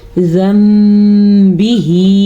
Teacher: नून साकिन या तनवीन को मीम में बदल देते हैं, तो वहाँ पे नून के बजाय फिर मीम पढ़ा जाता है